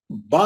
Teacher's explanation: बा जो है दोनों ऊपर और नीचे के होठों के मिलने से निकलता है